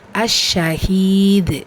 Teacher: ஸோ நம்ம தால் சுக்கூனாக ஓதுறோம். தால் சுக்கூனுங்கிறது கல்கலாவுடைய எழுத்து பெயருடைய முடிவில் வந்திருக்கிறனால பெருசாக அசைச்சு, அதாவது கல்கலத்துல் குப்ரா பெரிதாக அசைச்சு ஓதணும்